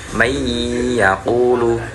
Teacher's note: ketika kita mengucapkan may yaqulu itu kan ada khayshum atau rongga hidungnya itu sangat berperan penting untuk mengeluarkan suara